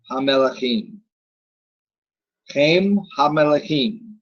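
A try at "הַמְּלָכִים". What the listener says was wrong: Right. Again, you're saying Ha-Melachim. It's Ha-Milachim.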